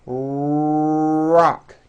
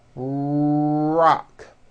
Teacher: notice how my lips are coming forward and my tongue moves back in my mouth and i push out the r sound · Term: american r